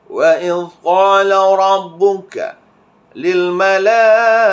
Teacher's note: Tafkhim yang ra ini iaitu dibacakan dengan menebalkan bunyi sebutan ra kan.